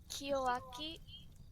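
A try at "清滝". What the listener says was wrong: It's actually got a T in it. I think it's one of those ones that are deliberately misspelled.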